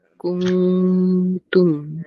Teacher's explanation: Nun mati bertemu ta tu dengung pula.